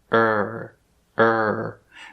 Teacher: right here where my jaw meets my throat this place is a little bit tenser a little bit higher when i do that er sound